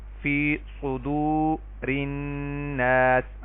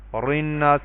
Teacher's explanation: را کو ترقیق یعنی باریک پڑھا جائے گا اگر اس کے نیچے زیر ہو